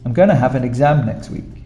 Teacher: when a lot of people speak going to they don't say going to they say gonna